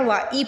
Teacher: وَآ نہیں پڑھنا، وَإِ پڑھنا، ای کی آواز آنی چاہیے